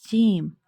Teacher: Pronounced as Jim, using middle of tongue to touch the middle part of palate.